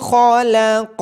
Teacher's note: خا اور قوف کو موٹی آواز کے ساتھ پڑھا جائے گا